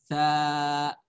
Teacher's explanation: Kalau sa ada udara, tapi udaranya nggak banyak desis. Namanya hamas.